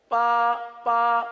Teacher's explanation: अगर तर हिस्से से के बजाय खुश हिस्से से अदा करेंगे तो बा के बजाय पा बन जाएगा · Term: खुश्क हिस्सा